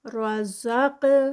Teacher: قاف بھی ہیوی ہے اور ساتھ میں قاف کا کلکلہ بھی ہے، اس کو یہاں پہ کلکلہ بھی چھوٹا سا لکھ لیتے ہیں. · را جو ہے وہ ہیوی ہوگا یہاں پر. رزق، قاف بھی ہیوی ہے اور ساتھ میں قاف کا کلکلہ بھی ہے